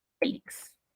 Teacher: es una palabra grave, porque la sílaba tónica es fe